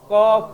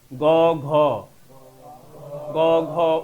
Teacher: খ বেশি কাঁপবে না গ ঘ গ ঘ উটা বেশি কাঁপে ক খ অল্প কাঁপে গ ঘ উ বেশি কাঁপে